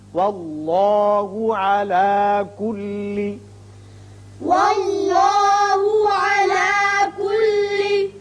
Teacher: اس میں اللہ کا لام پر ہوگا اس لیے کہ پہلے حرف پر زبر ہے.